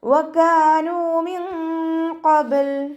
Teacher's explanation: നൂനിൻ്റെ കൂടെ വാവ് മദ് വന്നു, 2 കൗണ്ട് നീട്ടിക്കൊടുക്കുക.